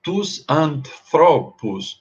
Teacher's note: E aí a sílaba, tônica migra da antepenúltima para a penúltima.